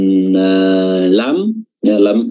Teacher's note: ujung lidah bertemu dengan langit-langit bagian depan